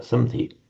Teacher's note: the sandhi of the m becoming a n before a d